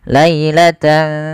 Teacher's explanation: tidak jelaskan suara nunnya tidak dibaca lailatan tsumma tapi disamarkan maka dinamakan dengan ikhfa